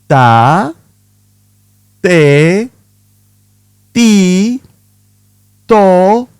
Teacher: Now, one of the things that you need to keep in mind if you want to pronounce like a native speaker of Spanish is that the sound of the T in Spanish is softer than in English. Your tongue touches just behind your teeth, so no big puff of air.